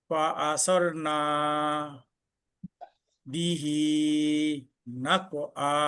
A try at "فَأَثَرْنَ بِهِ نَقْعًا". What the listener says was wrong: তাটা একটু নরম হবে। ফাআসারনা, না একটু টান হয়ে গেছে। না কলকল হবে। জি, فأثرن به نقعا